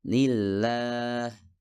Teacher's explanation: kata Allah diucapkan dengan lam yang lebih ringan dan itu terjadi jika diawali dengan tanwin atau kasrah